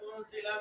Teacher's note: نون ساکن کے بعد حروف اخفا میں سے زا آ رہا ہے، جس کی وجہ سے یہاں اخفا کا قاعدہ لگے گا اور غنہ کریں گے، یعنی آواز کو ناک میں لے جا کر پڑھیں گے ایک الف کی مقدار